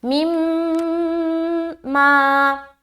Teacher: میم مشدد کا غنہ کرنے کے بعد الف مدہ بھی ہم کریں گے